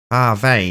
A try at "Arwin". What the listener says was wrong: Almost there. pronounce the A part more.